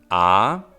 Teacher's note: But as we know, there are 2 sounds we lose in Germanic. A, that is the open central vowel, which is never long